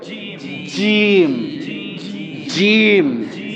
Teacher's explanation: জিহ্বার মাঝখানটা ঠিক উপরে লেগে যাবে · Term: জিমের উচ্চারণ